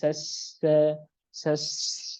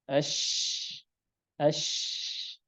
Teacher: menyebar nafasnya untuk huruf shin maka nafasnya harus menyebar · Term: Tafashi